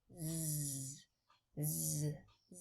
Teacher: It's like the pinyin s, but our voice box is on. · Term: z as in zebra